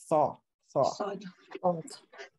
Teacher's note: So it's a velarized S sound. Velarized is like more from the back.